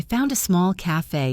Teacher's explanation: Found became founda dropping the D slightly